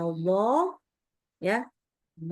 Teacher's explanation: aliran suara itu enggak keluar mulut tapi ke langit-langit mulut ya sehingga terdengar lebih tebal lagi. Ini sifat yang namanya idbak.